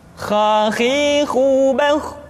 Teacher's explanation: Kha, pangkal tenggorokan. Diucapkan dengan mengalir nafas. Atau lebih praktisnya, pengucapan huruf kha persis terdengar seperti orang yang tidur dalam keadaan mengorok.